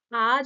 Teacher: অর্ধবিবৃত তুলনায় বেশি তারপরে তো আ যে একেবারে বিবৃত তাই না আ যখন উচ্চারণ করছি কি হচ্ছে যে মুখ বিবরণের আয়তন সবথেকে বেশি থাকছে